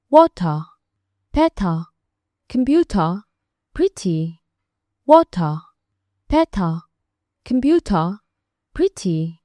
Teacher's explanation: dadka British accentiga ku hadlo waxay badanaa ugu dhawaaqaan xarafka T sida cad ay tahay ama sida ay u muuqato.